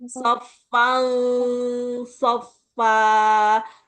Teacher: Dengungnya ada di dekat gigi seri bawah. Karena sod tempatnya di situ.